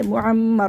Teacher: وقف صورت میں را کو موٹا پڑھیں گے کیونکہ را ساکن سے پہلے زبر ہے